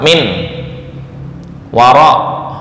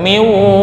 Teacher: Contoh, ya, di sini memiliki gunnah antara huruf pertama dan kedua. Nun mati yang bertemu dengan huruf wawu, ya, itu harus ditahan lebih lambat. Miwara, ya, ada logo tasydidnya. · ketika dipisah antara nun dan waw, itu sama sekali nggak ada bacaan gunnah